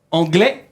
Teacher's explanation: sin pronunciar la S